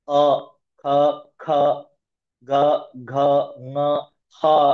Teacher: ಇದಿಷ್ಟು ಅಕ್ಷರ ಹುಟ್ಟೋದು ಕಂಠದಿಂದ ಬಾಯೆಲ್ಲ ಓಪನ್ ಇಟ್ಕೊಂಡಿರುತ್ತೆ ಅದು ಕಂಠ ಅಂದ್ರೆ ತ್ರೋಟ್ ತ್ರೋಟ್ ಇವುಗಳ ಉಚ್ಚಾರಣ ಸ್ಥಾನ ಪ್ಲೇಸ್ ಆಫ್ ಪ್ರೊನೌನ್ಸಿಯೇಷನ್